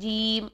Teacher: تو جیم کرتے کرتے ہماری اکثر کیا غلطی آتی ہے کہ میم ساکن کو جب ہم لاسٹ میں پڑھتے ہیں تو بالکل سائلنٹ کر جاتے ہیں، میم کی ساؤنڈ ہی نہیں آتی